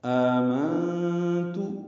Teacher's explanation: آمنت میں حمزہ پر کھڑا زبر ہے، مد بدل ہے، دو حرکات لمبا ہے، نون ساکن پہ اخفا ہے